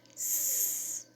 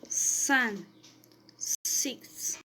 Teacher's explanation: The phoneme S has a alveolar articulation point, that is, the tongue comes into contact with the upper alveoli. It has a fricative articulation mode, that is, the R passes skimming for the narrowness produced by the tongue and teeth.